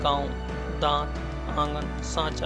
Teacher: ऐसे स्वरों का उच्चारण नाक और मुंह से होता है और उच्चारण में लघुता रहती है, जैसे गांव, दांत, आंगन, सांचा इत्यादि। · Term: अनुनासिक